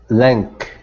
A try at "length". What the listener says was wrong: Now pronounce the TH at the very end. Okay, so the middle, so instead of saying length, okay, and pronouncing a voiced G, okay, switch it to an unvoiced K, and then now pronounce the TH at the end.